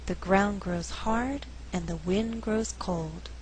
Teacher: in this faster reading only four content words are being stressed ground hard wind cold the resulting rhythm is 1 and 2 3 and four dun